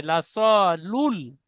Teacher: নুন হয়ে যাচ্ছে নুন হবে না লাম পড়তে হবে